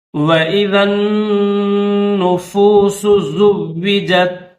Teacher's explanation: ذال کو نون مشدد کے ساتھ ملا کر آپ نے پڑھنا ہے اور نون مشدد کے اوپر غنہ کریں گے۔